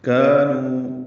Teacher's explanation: کاف باریک الف مدہ نو واو مدہ 2 حرکات لمبا کریں گے